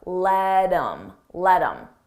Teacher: I take that H off of him I drop the sound and then I'm left with M but I combine it with the word before